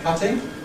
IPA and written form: ˈkʌtɪŋ (cutting)